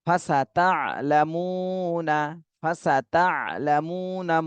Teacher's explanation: মুতে এক আলিফ টান দিতে হবে, পেশের বামে জজমওয়ালা ওয়াও, মদের হরফ